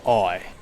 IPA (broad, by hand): ɒɪ